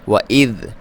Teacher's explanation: ذال کو باریک پڑھنا ہے، اس پہ ساکن ہے، اس پہ جزم ہے